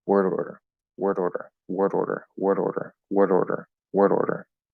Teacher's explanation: you'll notice that most of the time I'm not getting a solid D